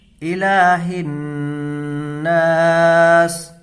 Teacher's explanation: دیکھیں یہاں زیر کی حرکت ہے، اس کو جلدی پڑھیں گے، لام کو کھینچ کر کے پڑھیں گے، لام کے اوپر کھڑا زبر ہے اور کھڑا زبر برابر ہوتا ہے الف مدہ کے۔